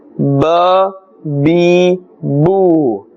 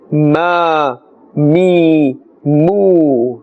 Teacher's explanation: Ba, remember the makhraj, it must be pronounced from the wet part of the lips, right? And mim, which is the next one, must be pronounced from the dry part of the lips.